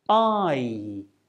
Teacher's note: I is a diphthong sound, which means it's a combination of two vowel sounds that are pronounced within the same syllable. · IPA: /aɪ/